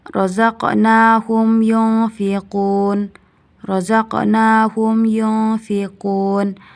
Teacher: hukumnya izhar syafawi karena mim sukun bertemu dengan ya jadi dibaca jelas